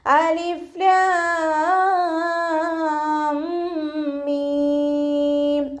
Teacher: എന്നാണ് പറയുന്നത് ഇവിടെ അലിഫിനെ തീരെ നീട്ടാതെ ഉച്ചരിക്കുട്ടോ അലിഫിനെ തീരെ നീട്ടാതെ ഉച്ചരിക്കുക ലാമിനെയും മീമിനെയും ആറ് കൗണ്ട് വീതം നീട്ടി കൊടുക്കണം